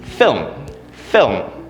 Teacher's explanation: film is just one sound one syllable no breaking down of the sounds